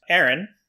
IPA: eəɹɪn